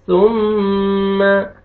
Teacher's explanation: मीम मुशद्दद है, गुन्ना करेंगे, नाक पे आवाज लेके जाएंगे